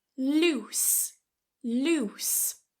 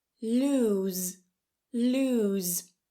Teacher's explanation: So that ending is a s, it's voiceless, loose.